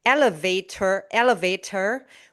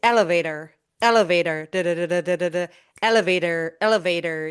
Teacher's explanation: So, when you do the D, you quickly tap the tip of the tongue against the gum ridge. The gum ridge is the part that is directly behind your upper teeth.